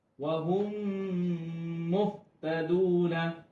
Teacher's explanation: মিলিয়ে পড়া, মিলিয়ে গুন্না সহিত পড়তে হবে। মিম সাকিনের বামে যদি মিম আসে তাহলে ইদগাম করিয়া গুন্না সহিত পড়তে হবে, আর এটা কি ইদগামে মিসলাইন বলে, ইদগামে মিসলাইন বলে।